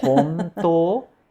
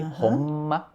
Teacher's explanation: Para falar honto, eu não preciso fechar a boca, mas para falar honma, eu preciso. É o T que puxa, né, para cima, tá.